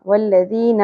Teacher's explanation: والذین میں ذال نرمی سے ادا ہوگا، یا مدہ ہے، ایک الف کے برابر کھینچیں گے